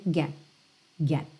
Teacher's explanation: eu chego a botar a língua no t mas eu não chego a soltar esse T mesmo